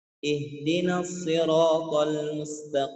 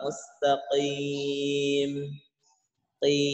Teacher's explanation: Jadi pengucapan o, i ini tidak tebal. Apalagi ketika kasroh.